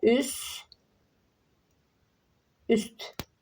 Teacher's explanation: Burda t düşür. Çünki sdan sonra samit gəlib. ST-dan sonra əgər S tt X tt-dan sonra əgər samit gələrsə sondakı hərf düşəcək. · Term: düşmə